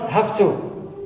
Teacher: have normally ends with va, which is voiced, but when it's followed by voiceless, clear? Right. By voiceless here, ta, so the va turns or changes to fa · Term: regressive